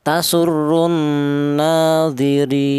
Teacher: boleh dibaca tul yaitu artinya panjang tiga alif atau enam harakat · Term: mad arid lukun